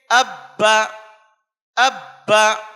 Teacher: مثال کے طور پر با کا مخرج دونوں ہونٹوں کی تری والا حصہ ہے، تو تشدید کی آواز میں سختی بھی با کے دونوں مخرج پر ہی کی جائے گی